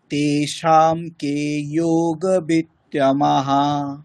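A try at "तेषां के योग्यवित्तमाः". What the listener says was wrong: তমাহা নয় তমা আকারটাকে টানতে হবে তারপরে বিসর্গটা বলতে হবে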